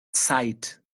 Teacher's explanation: Então começa Uhum. com Z, mas esse Z soa como TS